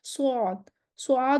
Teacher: ज़ुबान का पिछला हिस्सा ऊपर उठ रहा है, ज़ुबान की जड़ ऊपर उठ रही है, इस्तिला है स्वाद में।